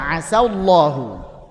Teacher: Karena ketemu tebal maka sinnya tipiskan. Punya sifat infitah karena nanti bisa jadi aso.